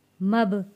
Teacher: बा हरूफे कलकला है, आवाज़ वापस पलट कर आएगी।